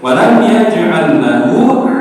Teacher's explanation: Nama hukumnya moten nama [berdehem] hukumnya tadi lamun idgham artinya masuk atau lebur. Maka lam sukunnya meniko lebur Pak ke lam yang di belakangnya. Bukan menambahkan, tapi lebur ke lam tasdid. Makanya tidak ditahan lama.